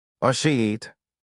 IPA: ʃiːt